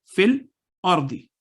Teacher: تو جب ملا کے پڑھا تو یا اور الف ساکن ہو گئے، بیچ میں نہیں پڑھے گئے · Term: وصل